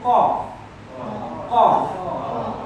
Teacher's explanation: So right from the back of the mouth, not from your throat. A lot of us think that the qaf is from the throat.